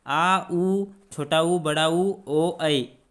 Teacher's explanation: और पश्च स्वर में जो है उच्चारण में जीभ पीछे की ओर खिसक जाती है।